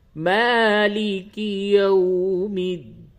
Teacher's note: میم کے اوپر کھڑا زبر ہے، اس کو تھوڑا سا کھینچ کے پڑھیے